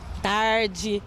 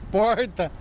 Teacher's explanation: o sotaque daqui é o r bem puxado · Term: r caipira